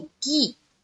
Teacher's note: जैसे कि काफ जेर, पहले हम लोग क्या पढ़ते थे, काफ जेर के, ये क्या है, मजहूल है, तो इसको मारूफ बनाना है। काफ जेर की, के नहीं, की।